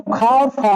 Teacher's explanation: इनका उच्चारण करते समय संघर्ष करना पड़ता है, इसीलिए संघर्षी व्यंजन।